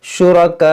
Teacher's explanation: रुकेंगे तो इस हमज़ा को साकिन करेंगे, और जो हमज़ा साकिना होगा तो इसमें झटका होगा , शुरका, इस तरह से। कुल सम्मूहुम अम तुनब्बिऊनहु बिमा ला